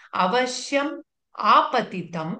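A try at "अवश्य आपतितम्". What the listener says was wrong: அவசிய ஆபதிதம், அங்க எங்க மகாரம் இல்ல இல்ல, அவசிய ஆபதிதம் யமலோக தர்ஷனம்.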